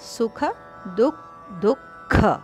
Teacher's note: ಸುಖ ದುಃಖ ಎರಡು ಖ ಮಹಾಪ್ರಾಣ